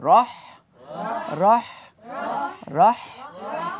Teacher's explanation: রহ বাতাস বের হবে বন্ধুরা রহ চাপাচাপি করা যাবে না